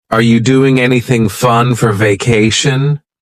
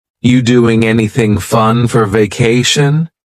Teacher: we're going to start this question with just you, which is reduced to yi.